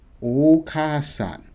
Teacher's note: So you don't say the a, because you're already saying a with the ka.